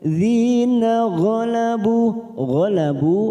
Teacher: ghalabu ada duma bertemu sukun 2 harokat kita panjangkan.